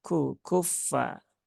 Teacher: kafnya itu memiliki sifat hams ya maka keluarkan ku ya ku kuffa bukan kuffa kalau kuffa nah agak rawan sebenarnya